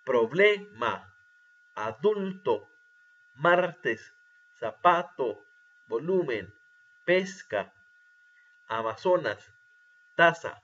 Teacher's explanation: llevan la intensidad de voz en la penúltima sílaba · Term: palabras graves